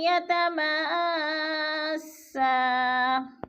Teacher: یتما پہ جو ہے مد متصل ہے، چار الفی مد ہے، حروف مدہ کے بعد حمزہ اسی کلمے میں ہے تو مد متصل، اس کو ہم نے چار حرکات کے برابر لمبا کر کے پڑھنا ہے